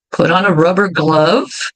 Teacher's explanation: vejam como os R's sempre são bem enrolados. Não importa onde eles estejam, no começo da palavra, ou no final, ou no meio. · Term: R enrolado